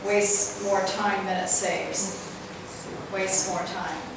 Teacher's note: Both the S's are kind of running together.